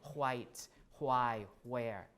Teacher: WH in spelling but when we pronounce it we still pronounce it as HW white who I where at least for many people